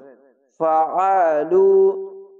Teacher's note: আইনটিকে মোটা করে গলা চিপে পড়বেন।